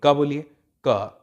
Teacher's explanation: ऐसा लग रहा है ना आपकी जीभ का हल्का सा हिस्सा जो है आपके कंठ से टकरा रहा है